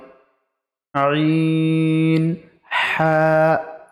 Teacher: হালকের বা কণ্ঠনালীর মধ্য বা মাঝখান হতে উচ্চারিত হয় আইন হা। হায়ে এক আলিফ টান হবে, আইনে 3 আলিফ টান হবে।